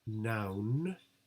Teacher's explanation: Mum, it's a bilabial closure. Noun, that's an alveolar closure